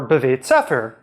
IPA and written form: bve:t sɛfɛʁ (בבית ספר)